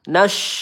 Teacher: huruf syin sukun nas ya udara menyebar di dalam mulut